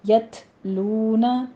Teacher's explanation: یت لونا تا پر ہمس کریں گے اور لو میں واو مدہ ہے